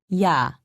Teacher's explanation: imagine that you are trying to say e and ah very fast be sure not to pause in between pronouncing the two sounds repeat after me yaw also written as yaw is pronounced yaw